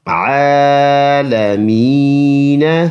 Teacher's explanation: وقف کریں گے تو یہ عالمین بن جائے گا، یہ زبر سائلنٹ کریں گے